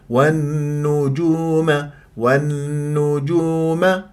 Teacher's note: والنجوم اللام شمسيه في كلمه النجوم اللي بعدها حرف مشدد النون النون المشدده الغنه اكمل ما تكون